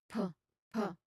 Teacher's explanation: there's no throat vibration at all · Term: p sound